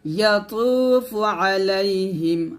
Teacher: তোটা মোটা করতে হবে পাতলা করলে হবে না